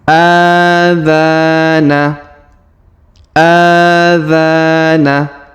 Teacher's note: huruf dza kita panjangkan dua harakat karena terdapat Alif di depannya